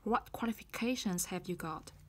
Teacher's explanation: Bắt đầu với từ để hỏi what. Ngữ điệu sẽ đi xuống.